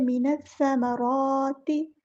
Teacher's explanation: मिनस्समा इस तरह पढ़ना है, मिनस्समा नहीं आएगा, मिनस्समराति। रा को हमने पूरा अदा करना है और रा पे खड़ा ज़बर एक अलिफ के बराबर लंबा करेंगे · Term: मद असली